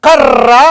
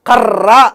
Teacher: నాలుక యొక్క కొన దంత మూలాన్ని తాడనము చేసినప్పుడు జరిగేటువంటి ప్రయత్నాన్ని ఏమంటాము అని అంటే తాడిత ప్రయత్నం అంటాము